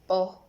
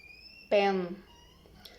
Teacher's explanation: Characteristic bilabials stop voiceless.